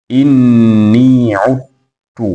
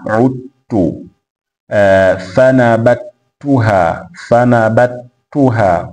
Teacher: kwa idgham herufi ya adh-dhal kwenda katika herufi ya at-ta